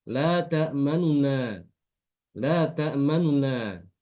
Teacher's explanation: Kalau raum, harokat domahnya dikurangi, ya, agak lebih cepat bacanya.